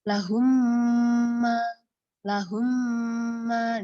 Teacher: di situ ada dengungan maka itu adalah dengungannya disebut dengan gunah Arid